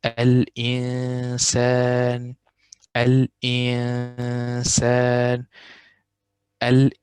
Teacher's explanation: we only say the tone of the noon, and we do not make the tongue touch the top of the mouth. So we will say al-insan, al-insan, al-insan. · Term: ikhfa